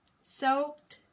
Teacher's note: So if you add ed, okay, all of these eds have the T sound.